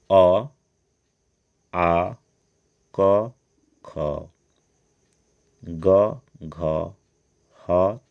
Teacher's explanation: वर्ण का उच्चारण स्थान वर्ग जैसे कंठ अ आ क ख ग घ ह तथा विसर्ग कंठ से बोले जाते है